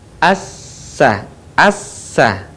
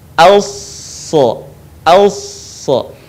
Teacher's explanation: Dan sifat serta karakternya pun tidak jauh berbeda dengan huruf sin. Yang membedakan antara sin dan shad adalah suaranya yang menebal saat kita melafalkan huruf shad.